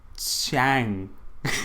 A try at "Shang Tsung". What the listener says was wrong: That's Chang. Chang with an S sound. Shang, like shank.